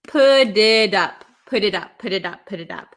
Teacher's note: And then we have a T, okay? So this, when we have a T sandwiched between two vowels, a lot of the times in American English, it's going to turn into a flap T, which sounds like a D.